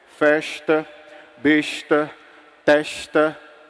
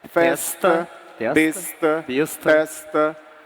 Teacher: Mas do sertão central para cá, tu percebeu que nós, cearenses, chiamos o S antes do T